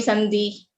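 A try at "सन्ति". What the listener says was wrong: The takara should be audible as takara. It should not go towards dakara.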